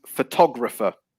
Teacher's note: it's a second syllable stress for photographer